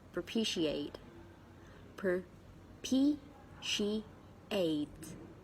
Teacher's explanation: there are four syllables and the stress is on the second syllable